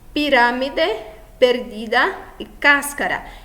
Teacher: aqui nós temos a antepenúltima sílaba mais forte, então classificamos como esdrúxula